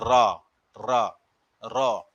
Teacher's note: रा का उच्चारण करते समय जिह्वा या जीभ का वत्सरे भाग की ओर उठती है या मुड़ जाती है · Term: लुंठना